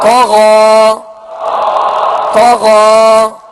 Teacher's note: طا زبر طا، غین کھڑا زبر غا، طغا، طغا۔ یہ دونوں حروف حروف مستعلیہ میں سے انہیں پر یعنی موٹا پڑھیں گے